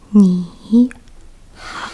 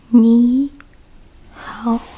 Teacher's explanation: When two third tones are combined together, the first one would change into the second tone, which is a rising tone.